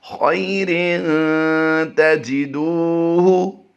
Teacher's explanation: اب یہاں پر توجہ کیجئے، خیرن، خیرن یہاں پر کوئی بھی لفظ لمبا نہیں ہوتا، جیسے ہی رن کی ادائیگی کریں گے تو غنہ کی طرف ہم چلے جائیں گے، اور تاجدو دال واو پیش دو میں ہم نے لمبا کر کے پڑھنا ہے، واو مدہ کا قاعدہ ہوتا ہے۔ تو ہم اس کی پھر ادائیگی رواں کرتے ہیں پورے کی، خیر تجدوہ۔